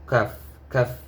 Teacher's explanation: কাফে হামস হবে, মুখ থেকে বাতাস বের হবে